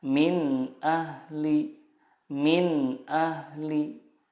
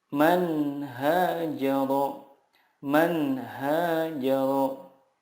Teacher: huruf-huruf izhar di sini makhrajnya adalah dari tenggorokan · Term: izhar halki